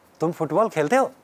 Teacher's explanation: if we put rising intonation on the verb, that converts the sentence into a question